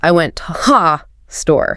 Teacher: if the beat is steady, those less important words, like to and the, they actually have to be spoken faster. Oh, wow, so they get physically compressed, so they do not throw off the rhythm. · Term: stress-timed language